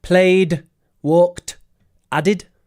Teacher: So we've got d, t, and id for ed at the end.